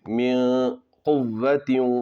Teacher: یہاں پر اخفا ہوگا، نون کی آواز کو ناک میں چھپا کر پڑھنا ہے